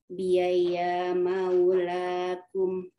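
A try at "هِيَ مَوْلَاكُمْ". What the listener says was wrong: jadi tadi bacanya hiyaya. Nah, itu jangan sampai hiyaya ya. Satu saja. Hiya maulakum.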